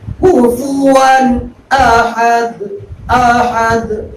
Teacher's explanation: یہاں پر بھی تنوین اور نون ساکن کا پہلا قاعدہ اظہار. تنوین یا نون ساکن کے بعد حروف حلقی کے 6 حرفوں میں سے ایک حرف حمزہ ہے، اس لیے یہاں پر بھی اظہار کریں گے